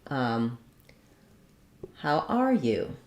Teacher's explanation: how are you with a little bit of a rise up